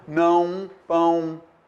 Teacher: Eu uso a letra O, mas ela vai simbolizar o quê? O som U, não, pão.